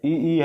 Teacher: इ इ का उच्चारण किससे होता है तालू से होता है इसे बोलते हैं तलव्य क्या बोलेंगे तलव्य बोलेंगे उसके बाद से